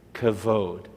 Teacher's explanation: you're pronouncing the kaf is a k, especially with a dot in the middle. That's a hard k sound.